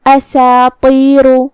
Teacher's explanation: یہاں حرف الطا ہے. طا حروف تفخیم میں سے ہے مطلب ہمیں اسے بھاری آواز میں منہ پھلا کے ادا کرنا ہے · یہاں حرف سین ہے. سین حروف ترقیق میں سے ہے تو ہمیں اسے ہلکی آواز میں پڑھنا ہے. اساطیر جو کہ اس کے بعد مد الف ہے اور مد الف اپنے پیچھے والے حرف کا حکم لیتا ہے تو ہم سین کو اور مد الف کو دونوں کو ہلکی آواز میں پڑھیں گے ترقیق سے. · شروعات میں حمزہ قطع ہے، ہم حمزہ کو ظاہر کریں گے